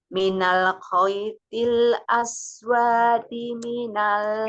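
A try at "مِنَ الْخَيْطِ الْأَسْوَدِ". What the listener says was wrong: Pendek kuahnya nih. Kuahnya pendek.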